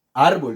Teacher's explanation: la sílaba tónica o la sílaba de mayor fuerza es ar